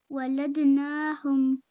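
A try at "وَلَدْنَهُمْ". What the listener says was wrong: نون کو کھینچنا نہیں ہے ولدنہم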